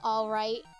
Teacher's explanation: they get rid of the L sound a lot too. Like when you're saying all right instead.